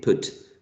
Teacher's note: U is a lax vowel because you don't actually put a lot of effort in spreading the lips when you're producing the sound U, as in put.